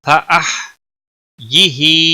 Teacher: فأحیہ ہا کو ہلانا نہیں، باقی کسی بھی حرکت والے حرف کو کھینچنا نہیں. ہا کے نیچے کھڑی زیر ہے، ایک الف کے برابر کھینچ کر پڑھیں گے